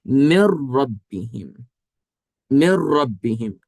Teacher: مر ربہم، مر ربہم، نون سیکنڈ کے بعد حروف یرملون میں سے حرف را آ گیا ہے، تو اب ادغام ہوگا کہ یہ نون را کے اندر ایسے داخل ہوگا کہ یہ دونوں ایک حرف مشدد بن کر ایک ہی تلفظ سے ادا ہوں گے، مطلب نون اس میں داخل ہو گیا ہے، اب مدغم فی میں داخل ہو گیا ہے، تو اب مدغم فی کا تلفظ ادا کریں گے، یعنی کہ را۔